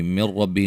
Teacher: نون ساکن کا ادغام ہے لیکن بلا غنہ ہے، غنہ نہیں کریں گے. اور را کو موٹا ادا کریں گے.